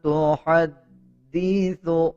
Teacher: اب دال کے اوپر شد ہے، دال کو ہا کے ساتھ ملا کے پڑھا جائے گا اور دال پہ مضبوطی بھی دی جائے گی